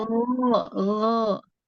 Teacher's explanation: Nah, kalau G go Indonesia di lidah ya go gitu ya, di lidah go di tengah. Nah, sedangkan huruf go ini di tenggorokan, go tenggorokan bagian atas